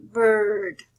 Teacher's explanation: It's similar to the schwa but longer. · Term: open mid central